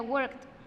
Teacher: Fíjense, para un sonido final no sonoro, la ed se pronuncia como una T. Work termina en K, el sonido final sería worked, con una T al final